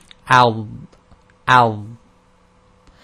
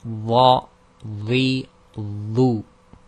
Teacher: there's a complete stop of sound when it's sakin, and the letter sounds heavy. So this would be al, al, and when you vowel it, it'll be la, li, lu.